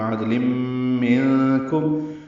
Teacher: تنوین کے بعد میم آنے کی وجہ سے ادغام ناقص ہے، غنہ ہوگا · عادل میں دال ساکن پہ قلقلہ ہے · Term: اخفا